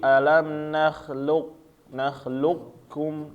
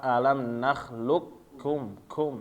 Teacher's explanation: dibaca dengan idgham kamil, yaitu qaf diidghamkan dengan huruf kaf tanpa tersisa